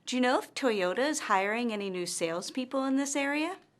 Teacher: our intonation rises at the end of this yes or no question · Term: rising intonation